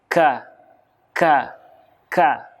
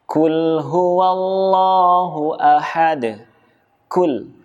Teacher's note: Kul. Ada bunyi seperti nafas yang keluar. Itu adalah huruf kaf.